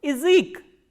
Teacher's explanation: when ya is in unstressed position, the sound of ya becomes e. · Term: reduction